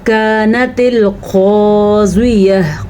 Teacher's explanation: क़ाफ़ को पुर पढ़ना है, इस काफ़ को बारीक पढ़ना है। ये बारीक पढ़े जाने वाला काफ़ है और ये जो क़ाफ़ है 2 नुक्तों वाला क़ाफ़, ये मोटा पढ़ा जाता है और पुर पढ़ा जाता है।